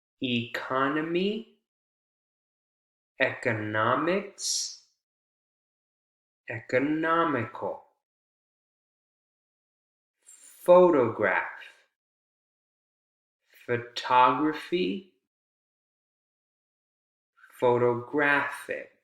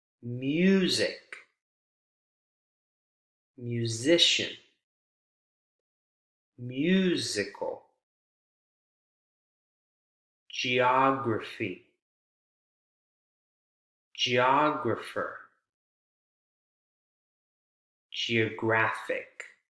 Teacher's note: the stress shifts over to the syllable that comes right before the suffix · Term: primary stress